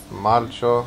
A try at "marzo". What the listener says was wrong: It's not Marcho. Marzo. With a Z.